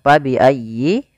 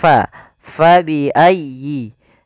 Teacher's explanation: Fa harus dialirkan jangan sampai diganti dengan P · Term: huruf F